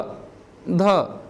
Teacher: आपका जो जीभ की अगला हिस्सा है वो ऊपर वाले दांत पर स्पर्श हो रहा है। तो ऐसे ही व्यंजन को हम क्या बोलेंगे, दंतीय व्यंजन कहेंगे।